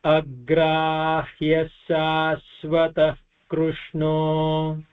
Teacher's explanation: Agrahyah shashvatah कृष्णो in this the agrahya sha, so it will become a double sha, and shashvata, the visarga becomes a half visarga because it is followed by the letter ka